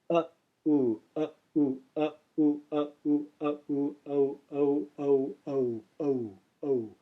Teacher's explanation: formed simply by joining the short uh in America with the long u in dude so uh plus u Uh u o o o o o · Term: dip thong